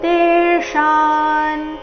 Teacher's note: ತೆ ದೀರ್ಘ ಮೂರ್ಧನ್ಯ ಶಕಾರದೊಂದಿಗೆ ದೀರ್ಘ